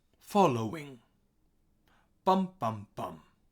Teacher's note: Okay, we have high, low, high.